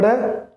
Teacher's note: इनमें जीभ दो बार ऊपर ड़ यानी दो बार तालु के स्पर्श करती है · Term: द्विस्पृष्ट